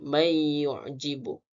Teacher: Kemudian may yu'jibu, di mana nun sukun bertemu dengan ya, di mana hukum tajwidnya idgham al-qunna, di mana huruf nun sukun dimasukkan ke dalam huruf yang kedua, huruf ya, dibaca berdengung 2 harakat.